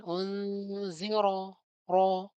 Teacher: unziro ro ro-nya tafkhim dibaca tebal ya